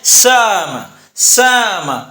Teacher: اور بین بین بعید کے اندر دیکھیں حمزہ سے پہلے سین ہے، سین کے اوپر زبر ہے، زبر کے مطابق جو حرف ہے وہ الف ہے، لہذا حمزہ اور الف کے درمیان والی آواز نکالنے کو بین بین بعید کہیں گے